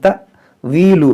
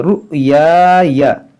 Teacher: हमज़ा साकिना है, इसको झटका देकर पढ़ेंगे